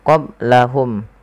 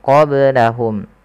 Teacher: qablahum ada ba sukun maka dibaca dengan qalqalah. Kesalahan yang terjadi adalah tidak memantulkannya.